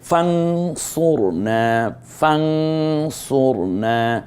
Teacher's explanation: ফান না বলে ফাং বলবো তার কারণ নুন সাকিনের পরে সদ এসেছে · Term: ইকফার